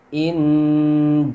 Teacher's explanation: Wal nun mati bertemu jim, hukumnya ikhfa hakiki, yang mana dibaca samar dengan dengung.